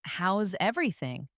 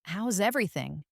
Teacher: with a bright, upward inflection on everything